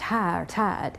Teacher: In many parts of the South, words like high or tide get pronounced ha or tad. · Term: vowel shift